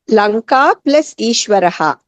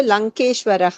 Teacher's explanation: వస్తుంది అందుకు గుణసంతికి ప్రకారం రమేషః అయింది ఏకారం వస్తుంది లంకా ప్లస్ ఈశ్వరః లంకాలో దీర్ఘ ఆకారానికి దీర్ఘ ఈకారం పరమైనప్పుడు ఏకారం వస్తుంది